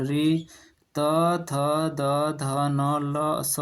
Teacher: ये सब दंत से उच्चरित होते हैं